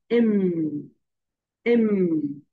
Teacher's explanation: এম, দুইটা দাঁত দুইটা ঠোঁট, আপার lip and lower lip touch together.